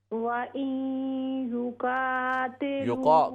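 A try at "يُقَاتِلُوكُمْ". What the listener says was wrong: काफ को मोटा करें, उसके साथ अलिफ को भी मुंह भरकर पढ़ें।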